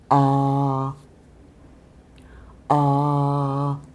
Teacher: And notice the mouth is very relaxed. You don't round your lips.